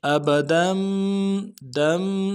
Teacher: ابدم میں دال کے اوپر تنوین ہے، تنوین کو میم کے ساتھ بدلیں گے